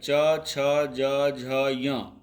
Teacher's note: इन सभी वर्णों का उच्चारण स्थान तालु है।